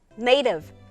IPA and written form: neɪtɪv (native)